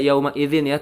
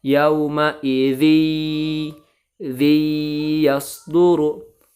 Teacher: Nah, ketika tanwin bertemu ya, maka tanwinnya itu dimasukkan ke huruf ya dan suaranya ditahan 3 harokat. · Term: idgham bi gunnah